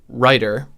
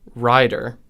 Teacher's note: In the case of the word writer, which we can write like this in IPA, and in the case of the word rider, we no longer have the t-d distinction that British speech does. In American English, both of these words have a flap in the middle.